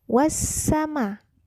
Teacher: Pada kata wassama terdapat alif lam samsiyah, kemudian terdapat mad yaitu huruf ma. Jika kita membacanya maka dipanjangkan 4-5 harkat. Itu disebut dengan mad wajib muttasil.